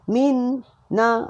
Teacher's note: Jangan baca dua kali nun.